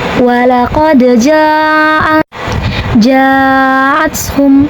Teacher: Kemudian hamzahnya a pada kata jaatum, maka jim dipanjangkan boleh 4 sampai 5 harakat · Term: mad wajib muntasil, mat wajib muntasil